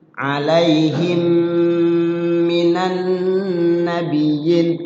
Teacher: Alaihim ditahan, ada waktu di situ, jangan terburu-buru karena idgham mimi.